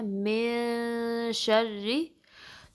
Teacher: नून की साउंड को नाक में छुपाना है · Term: इख्फा